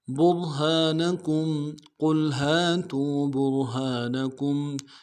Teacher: کاف کو میم ساکن کے ساتھ ملانا ہے، یہاں پہ اظہار ہوگا